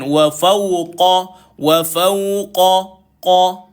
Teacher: qaf ini dibaca dengan tebal. Lidah kita perlu diapungkan. Apungkan lidah kita boleh baca. · Kalau dari segi sifat, huruf qaf lidah terangkat bila baca, huruf kaf lidah tidak terangkat.